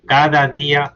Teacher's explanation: Dicen, saben que cada día y se ve en el en el oscilograma, en la parte de arriba se ve como ese cada día, el cada tiene el acento principal. Hay un desplazamiento del acento.